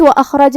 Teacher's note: یہاں بھی حرف الخاء کو بھاری آواز میں پڑھیں گے اور اسے جزم سے ادا کریں گے